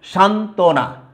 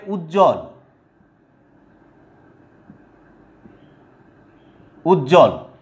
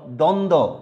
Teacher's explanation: যুক্ত ব্যঞ্জনের সাথে ব ফলা যুক্ত হলে কি হবে, বয়ের উচ্চারণটা বিলুপ্ত হবে, লোপ পাবে, অর্থাৎ বয়ের উচ্চারণটা হবে না